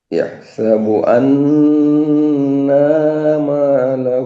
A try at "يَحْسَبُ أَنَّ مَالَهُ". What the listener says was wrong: আন্না, এই যে টান হচ্ছে, টানটা হবে না।